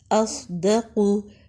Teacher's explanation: صاد میں موٹی سیٹی کی آواز ہے